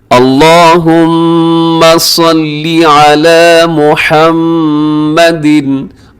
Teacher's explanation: लफ्ज़ अल्लाहुम्मा लिखा हुआ तो इसे आपने खूब मोटा पढ़ना है